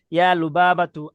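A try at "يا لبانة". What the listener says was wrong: হুজুর, এখানে কি ইয়া লুবাবাতু না ইয়া লুবানা? জি, আপনি লুবাবা বলছেন।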